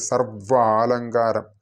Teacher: അപ്പോൾ നമ്മളെ മുകളിലുള്ള പല്ലുകൾ ചുണ്ടിലേക്ക് തന്നെ ചേർത്ത് പിടിച്ചിട്ട് സർവാലങ്കാരം താഴത്തെ ചുണ്ടിലേക്ക് അമർത്തി ജപിക്കേണ്ട അല്ലെങ്കിൽ ചൊല്ലേണ്ട ഉച്ചരിക്കേണ്ട ഒരു അക്ഷരമാണ് വ